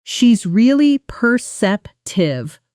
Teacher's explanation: with almost no space between really and perceptive